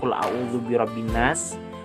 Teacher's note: Nah, itu kan tidak ada lagi bunyi lamnya, tapi masuk pada bunyi huruf nunnya. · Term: idgham syamsiyah